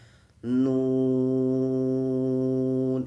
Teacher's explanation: itu harus dibaca sekiranya 6 harokat